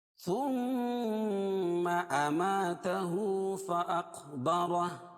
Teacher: ثم میم مشدد، میم مشدد اور نون مشدد دونوں میں غنہ ہوتا ہے، ایک الف کے برابر اس کو غنہ کرتے ہیں